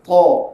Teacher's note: Isti'la itu ialah terangkat pangkal lidah ketika menyebut huruf ta. Jadi bunyi dia meninggi. Ta. Lawannya bunyi merendah.